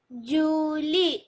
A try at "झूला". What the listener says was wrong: झूली नहीं है, झूला. क्या है? झूला. ई की मात्रा है उसमें नहीं, वो आ की मात्रा है. झूला.